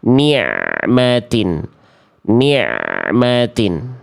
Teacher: bunyi ain sukunnya dialirkan sedikit sampai melafalkan mimnya